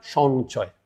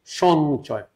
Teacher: ইয় চ যদি কোথাও যুক্ত হয়ে যায় তাহলে ইয়র উচ্চারণটা দন্ত্যান্ন হয়ে যায়